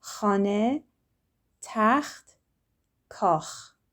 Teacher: Like if you have something stuck in the back of your throat and you need to get it out, it's that kh.